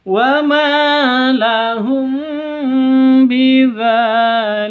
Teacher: Wa ma panjang 2 ketukan karena ada alif diawali dengan fathah mad asli atau mad tabi'i.